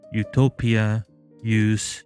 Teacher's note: The close back rounded u can be heard in utopia, use